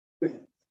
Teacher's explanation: You don't get any rattling until you get to the I.